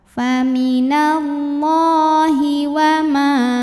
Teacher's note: Allah jika diteruskan hukumnya adalah mad tabi'i muqaddar karena ada baris fathah tegak di atas huruf lam, dibacanya panjang 2 harokat.